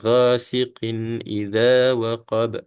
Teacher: ya ini kita akan cara baca secara jelas ataupun izhar ya kita akan baca secara jelas antara Qin dan i ya kita tak masukkan ya kita tak dengung